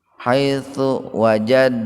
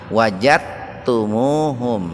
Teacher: Ini disebutnya idgham muttaqaribin itu. Jadi huruf dal dengan huruf ta itu dekat Pak, dekat. Maka membacanya diidghamkan, dimasukkan ke ta